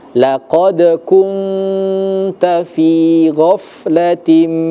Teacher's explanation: Nah, kemudian di fin-nya itu ada ya sukun sebelumnya berharakat kasrah yang artinya fi-nya di situ mad thobi'i huruf huruf ya dibaca panjang · nun sukun itu bertemu dengan huruf ta ya. Maka hukum bacanya itu adalah ikhfa. Harus disamarkan.